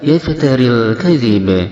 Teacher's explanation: Yaftaril kadhib, alif lam di sini hukumnya adalah alif lam qamariyah yang wajib idhar, yaitu lamnya dibaca dengan jelas